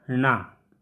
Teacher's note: इसका उच्चारण स्थान मूर्धा होता है, साथ ही साथ नासिका भी होता है।